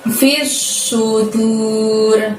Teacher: Masukkan ke huruf shot di depannya, tekan, tahan selama 2 harokat. Baru bunyi su.